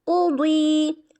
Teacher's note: قاف موٹا حروف، قاف حروف مستعلیہ سے بھی ہے اور موٹا بھی پڑھا جائے، یعنی موٹا ہی پڑھا جائے گا، ٹھیک ہے۔